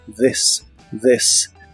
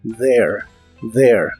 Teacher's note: la th se pronuncia como una d vibrante